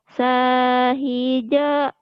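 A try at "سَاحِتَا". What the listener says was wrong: Itu mah nggak ada titiknya to atuh. Sahito.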